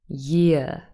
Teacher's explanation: Now, this is with a non-rhotic accent like myself. In British English, usually year, the R is not pronounced.